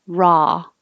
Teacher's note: the vowel is ah so you have to open